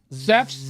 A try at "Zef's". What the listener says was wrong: Yes, but your Z's sound like S's.